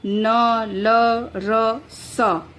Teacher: तो इसके उच्चारण में जो जिह्वा की नोक होती है वो दांत के अंतिम भाग एवं ऊपरी मसूड़ों का स्पर्श किया करती है। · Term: वर्त्स्य